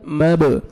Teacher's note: मब बा हुरूफ क़लक़ला में से डबल साउंड आएगा